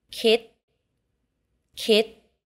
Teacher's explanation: the last consonant in the thai word is always unreleased